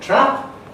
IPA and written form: trap (TRAP)